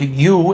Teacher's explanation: The music also exhibits features of the California shift, aka goose fronting, or north of the border, they call it the Canada shift. Taking vowel sounds like ooh in the word you and fronting it a bit more.